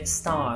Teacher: この▁R▁の発音言っていません